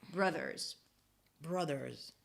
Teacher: -brothers-, okay? So you stick the tongue out for the /th/ and then you pull it in for the /r/ immediately.